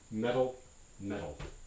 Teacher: they both end up as this extremely short r sound, as in metal, metal.